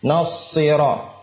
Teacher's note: dia memiliki sifat safir, ya, seperti suara angsa, safirnya sa. Nasira. Dan tidak dimonyongin.